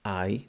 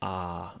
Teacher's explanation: Instead of, for instance, I, they say ah, and they lengthen it.